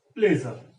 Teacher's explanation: And this is slightly retroflex kind of sound, where your tongue is slightly bent backwards and it touches the place between your teeth ridge and hard palate. So this is palato-alveolar.